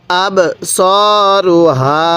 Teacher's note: হা আলিফ জবর হা এক আলিফ টান দিব